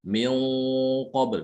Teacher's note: huruf setelah nun sukun adalah huruf yang tebal, otomatis gunanya ikut tebal, terbawa dia.